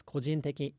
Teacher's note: in the Japanese T, the tip of your tongue actually touches the back of your upper front teeth